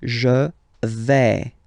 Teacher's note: when you combine this A-I, you get the sound E, really open